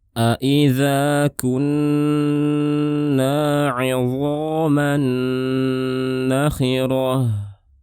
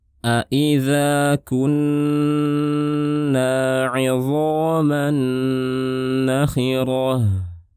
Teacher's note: tanwin bertemu dengan nun, disebut dengan idgham bi gunnah, kita panjangkan suara gunnahnya.